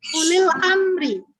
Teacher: pada kata ulil amri kebanyakan dibaca panjang U-nya, tapi seharusnya dibaca pendek